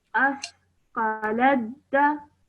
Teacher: you ignored the sound of the ta and straight away joined the lam to the dal.